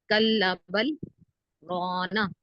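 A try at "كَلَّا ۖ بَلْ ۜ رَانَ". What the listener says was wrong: کل بل ایک ساتھ ہی پڑھیں گے. کل بل ایک ساتھ پڑھیں گے. نا کا جو نون ہے یہ پھینکنا نہیں ہے. حرکات کو بغیر کھینچے بغیر جھٹکا دیے معروف پڑھتے ہیں تو جھٹکا پیدا ہو رہا ہے. سے لفظ پھینک رہے ہیں.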